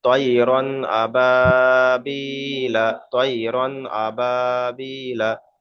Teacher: তানবিন, তানবিনের পরে হুরুফে হালকির 6টি অক্ষর মধ্যে থেকে হামজা এসছে, এটা হলো ইজহার, অর্থাৎ গুণনা হবে না।